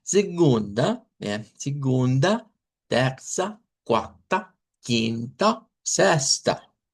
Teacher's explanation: Los que terminan en A, recuerden no usar la A del español, sino esa a centralizada